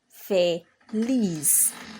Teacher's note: Fe, lis, and it ends with a consonant, the alphabet zeta, or Z in English. And so the stress falls on the lis